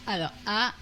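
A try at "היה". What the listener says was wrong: Ah, non, il faut prononcer le yod. Aya.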